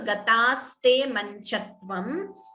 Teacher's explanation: Note the dvitvam, the t is doubling